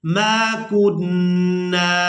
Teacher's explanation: मीम को भी अलिफ मद्दा की वजह से और नून को गुन्ना करने के बाद अलिफ मद्दा की वजह से खींचकर अदा करेंगे